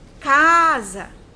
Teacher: a sílaba K foi uma sílaba mais prolongada do que a sílaba Sá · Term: sílaba tônica